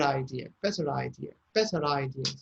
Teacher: so the r becomes more clearer than usual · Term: linking